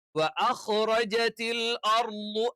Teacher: ളയുടെ മഖ്റജ് പറഞ്ഞു, നാവിന്റെ വലതുവശം അല്ലെങ്കിൽ ഇടതുവശം ഏതെങ്കിലും ഒരു വശം അതിനെതിരെയുള്ള അണപ്പല്ലിലും അതിന്റെ മോണയിലുമായി ചേർത്ത് വെച്ചുകൊണ്ടാണ് നമ്മൾ ള എന്ന് ഉച്ചരിക്കുന്നത്.